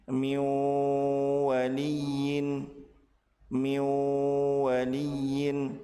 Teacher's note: Apabila nun sukun bertemu dengan wau, maka nun dilebur ke huruf wau dan ditahan dua harakat disertai dengan ghunah.